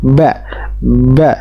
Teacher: huruf ba keluar dari kedua bibir disebut dengan asyafatan asfatan ya yaitu dengan mempertemukan dua bibir bibir atas dan bibir